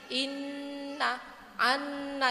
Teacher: itu bacaan guna tu itu sebenarnya ditahan satu Alif atau dua harakat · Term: bacaan gunah